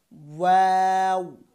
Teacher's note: তারপর হচ্ছে ওয়াও, এটাও দুই ঠোঁট থেকে, কিন্তু এটার উচ্চারণের ভঙ্গিমা হবে ঠোঁট প্রথমে গোল থাকবে, তারপরে মিলবে, তারপরে আবার জায়গায় চলে আসবে